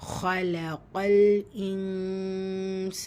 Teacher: நூன பாதியா மறைச்சு குன்னா செஞ்சு ஓதணும். கூடவே அலிஃப் மத்தா இருக்கு இரண்டா ஹரக்கத் அளவு நீட்டம் கொடுக்கணும்.